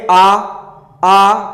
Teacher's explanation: आ का उच्चारण करते समय मुख द्वार हमारा क्या होता है? पूरा खुलता है। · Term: विपरीत स्वर